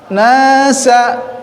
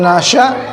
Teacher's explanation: Nasa, sa pendek, sa huruf sofir secara mahroz adalah ujung lidah bertemu dengan gigi seri tapi agak ke bawah